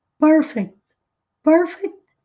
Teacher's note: A ênfase, a sílaba tônica é a primeira, é aqui no início.